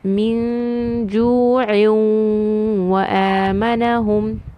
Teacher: So I do not hear a noon sound, but I hear a gunna. I'm going to hold it 2 counts and keep.